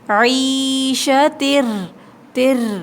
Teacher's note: را کے ساتھ سختی کے ساتھ ملائیں گے، را پہ تشدید ہے